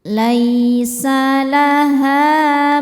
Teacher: Cara bacanya dipanjangkan h-nya dua harakat. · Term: mad thobi'i zohiri